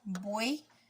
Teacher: buey es un triptongo porque el sonido de la Y es un sonido de I cuando lo pronunciamos.